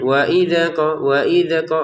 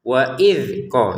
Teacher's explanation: Jadi dzal bukan huruf yang harus dipantulkan. Wa idh qa, itu saja, tidak ada pantulan sama sekali.